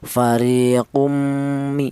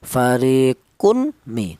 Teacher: Idgham itu artinya tanwin ini cara bacanya langsung menyatu ke huruf mim, itu namanya idgham. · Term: idgham bi gunnah